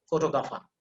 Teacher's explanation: forget about the r there is no r in this word